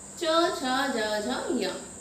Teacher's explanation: तो इनका उच्चारण स्थान क्या है, तालु। हम तालु से इसका उच्चारण करते हैं, हमारी जीभ तालु को स्पर्श करती है। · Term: च वर्ग